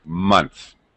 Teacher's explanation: th of course is voiceless so it's going to have s pronunciation